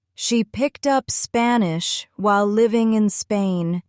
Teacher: Notice how the voice rises slightly at Spanish and falls at Spain.